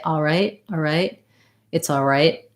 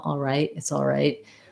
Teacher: Sometimes you will hear it more like all right without that L sound.